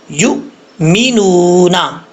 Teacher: یہاں پر حمزہ ساکن ہے، اس کو جھٹکے سے پڑھیں گے